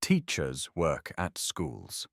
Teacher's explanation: Stretch on teachers. Relax on work at stretch on schools.